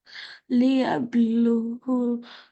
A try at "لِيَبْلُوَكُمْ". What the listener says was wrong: ليبلوا. The waw has a fatha.